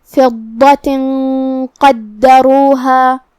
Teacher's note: غنہ اپنے اگلے والے حرف کا حکم لیتا ہے تفخیم میں اور ترقیق میں، تو ہم یہ غنہ کو بھاری آواز میں ادا کریں گے